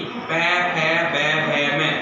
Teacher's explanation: इनको जब बोलते हैं तो हमारे होठ है वो सबसे ज्यादा इस्तेमाल किए जाते हैं, आपस में टकराते हैं। यानी मनुष्य के अगर ऊपर वाला होठ काट दिया जाए तो इन व्यंजनों को अपने नहीं बोल सकते। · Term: ओष्ठ्य वर्ण